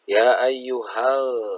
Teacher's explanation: ada mad asli bertemu dengan hamzah berbeda kalimat. Panjang bacaannya 2 sampai 6 harokat. Ya ayyuhal, hal adalah alif lam syamsiyah, di mana ada alif lam bertemu dengan salah satu huruf syamsiah yaitu zal. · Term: mad zaij munfasil